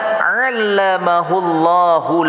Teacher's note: lafaz Allah dibaca tafkhim tebal